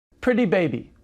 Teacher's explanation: I'll say it again, and notice that the two words run together.